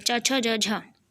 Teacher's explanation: तो स्पर्श संघर्षीय होते हैं च वर्गों का जो पहले 4 अक्षर होते हैं